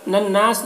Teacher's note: نون مشدد غنہ ہوگا اور الف مدہ ہے تو ایک الف کے برابر کھینچیں گے